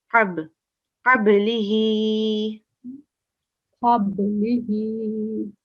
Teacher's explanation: it's a sakin letter, but qalqala, a slight jerk